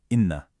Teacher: This is this gorgeous rich nasal sound that you hold for just a moment. Think like one, two counts. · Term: gunnah